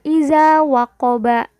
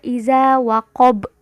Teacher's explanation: Nah, ini yang termasuk qalqalah kubro, ada di akhir kalimat atau kata, ya. Bacanya dimatikan meskipun tandanya bukan tanda sukun.